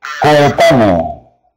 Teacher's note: tengo la O con la E, la E con la O, entonces puedo decir que hay dos hiatos